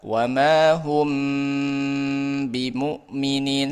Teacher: Yang pertama, ikhfa syafawi ketika ada huruf mim sukun bertemu dengan huruf ba. Ya, menggunakan huruf mim dengan gunah yang dipanjangkan ketika bertemu dengan huruf ba